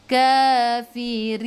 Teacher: Sebelum huruf akhir ada ya yang tak ada baris ma'ril sukun, boleh baca 2, 4 atau 6 harakat. Matikan dengan huruf nun, hujung lidah menyentuh gusi atas